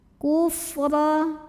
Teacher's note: Fa-nya berangin ya, ada hamesnya.